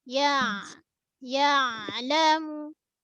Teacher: ya tengah lidah, ain lunak. Sifat ain tawassut, mengalir sikit.